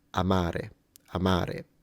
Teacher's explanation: it's clearly that the first a is shorter than the second so there is a quantity variance there or variable rather than a quality